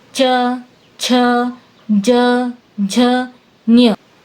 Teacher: अब इसी प्रकार च वर्ग देखो, च, छ, ज, झ, ञ। इनको बोलते समय जीभ ऊपर तालू को छूती है।